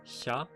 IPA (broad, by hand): ça